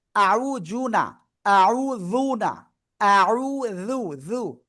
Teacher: জিহ্বার আগে উপরে দুই দাঁতের আগায় লাগবে। জাল এই অক্ষরটা এবং জ দুইটাই ওই আগায় লাগবে।